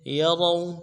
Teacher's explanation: یروا میں واو لین ہے، بغیر کھینچے پڑھیں گے